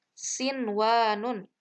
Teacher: mencontoh bacaannya itu sinwanun jadi bacanya itu tidak dimasukkan Inun itu tidak dileburkan ke huruf wawu namun tetap dibaca jelas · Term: izhar